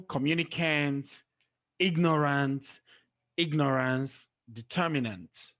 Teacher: once ending with a n t or a and c e the stress is placed on the third syllable from the end